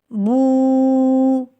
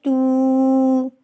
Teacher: با کو الٹا پیش کے ساتھ ملا کے پڑھیں گے اور ایک الف کے برابر کھینچیں گے بھی۔